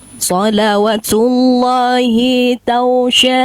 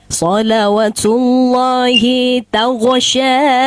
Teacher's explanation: Tag jangan terlalu dipantulkan. Disamarkan dikit.